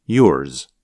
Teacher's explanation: if you listen carefully, you can hear a bit of the sound of the letter S at the end of a word like yours. So the sound of Z is not as strong or as long as in a word like zero. Instead, it's more like a Z with a little S at the end.